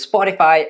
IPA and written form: ˈspɒtɪfaɪ (Spotify)